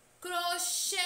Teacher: pois a última sílaba é tônica crochê a sílaba Xê é a mais intensa é a que demorou aí mais a ser pronunciada